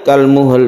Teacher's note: muttasil yaumu mata untuk mewakafkan kalmul ini kita sukun lamnya kemudian harus ada suara lam itu ketika kita wakafkan sepertinya qolqolah tapi bukan Qalqalah